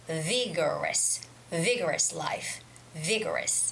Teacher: There's a stress on the first syllable, which is vi.